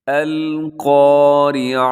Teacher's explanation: اگر یہاں پر وقف کرنا چاہیں آپ تو کیسے ہوگا؟ یہ جو گول تا پر اگر وقف کیا جائے تو اس کو ہا سے بدل دیا جاتا ہے۔ القاریعہ، آخر میں ہا کی آواز بھی آنی چاہیے۔